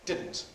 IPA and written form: ˈdɪdn̩t (didn’t)